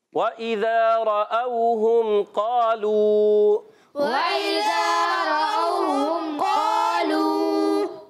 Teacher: واو کی ادائیگی ہوتی ہے دونوں ہونٹوں کی گولائی سے